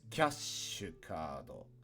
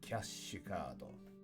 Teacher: This one's a little harder to read because it's got this ki plus the ya means kya, and then this little t symbol is indicating that we need a glottal pause between the kya and the sh sound.